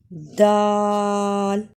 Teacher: ाल दाल जबान की नोक नाया उलिया की जड़ से लगे यानी जबान का किनारा सामने ऊपर के दो दांतों की जड़ से लगे तो दाल अदा होता है